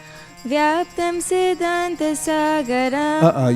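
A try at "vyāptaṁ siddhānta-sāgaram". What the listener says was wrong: You can't end graha and sagaram on the same note. You see, end on graha and end on sagaram, it sounds flat.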